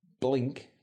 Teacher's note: pronounced with some tension in the throat across the board in Australian